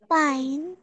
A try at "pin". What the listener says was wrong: আবার পাইন কেন হবে ওমা? সবগুলো আই দিয়ে আছে, সবগুলো বলতেছি ই এর মতো উচ্চারণ হবে, তোমরা আই বলতেছো কেন বারবার?